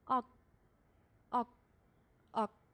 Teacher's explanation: 表音是歌，也就是说后面这两个他们的发音特点和咱们刚讲的是一样的，只是形态上有区别而已，可能不同的收音写出来，就是你看第三组第四组和第五组加了收音之后的字显然是三个不一样的字吧，这三个字呢是同音异形词，他们互相的意思不一样，但是发音是一样的。汉语里面也有这样的情况呀，这两个单词发音是一样的，但写出来不是同样的两个字。大家按照咱汉语的思路去想一下，可能会更明白。这就叫代表音。我们再来读一下啊，后面三组都读▁ok▁ok▁ok，▁这三个▁ok▁写法不一样，但发音是一样的。它们共同的发音特点是，发音的时候这个歌音不发出。 在将发未发的时候赶紧收住它，感觉嗓子里面气流被阻断，被突然停在嗓子当中